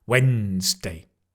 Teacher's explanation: Give a really strong stress on the when.